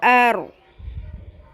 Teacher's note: اس کو آپ نے پر کرنا ہے را کو